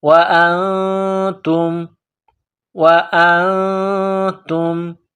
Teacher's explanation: نون ساکن کے بعد تا ہے، حروف اخفا ہے تو غنہ کریں گے، آواز ناک میں چھپائیں گے.